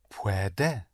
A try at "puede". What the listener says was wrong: But only one stress. Right. Puede, puede.